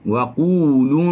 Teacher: Tebalkan dengung. Kerana nak masuk dha. Dha huruf itbaq.